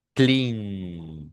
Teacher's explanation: Fíjense que el verbo clean, si usted se coloca las manos aquí, las cuerdas vocales vibran por la n